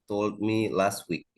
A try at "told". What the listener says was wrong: Jadi told-nya ini harus ada D-nya ya di belakang. Jadi nggak bisa hanya bilang told gitu, nggak bisa. Told, ada D-nya. Told.